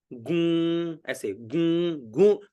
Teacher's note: ये जो गु है ना, ये मतलब अनुनासिका से इसका उच्चारण हो, है ना, गू, ऐसे गू, गू, यानी एक गूंज करते हुए उस गु का उच्चारण हो, है ना।